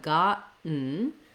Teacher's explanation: So I've rewritten that for you here with the letters AH, so you can visualize that open ah. There's no rounding and no O sound in gotten or in cotton. · we don't really have a vowel sound in our second syllable. We have what's called the syllabic N.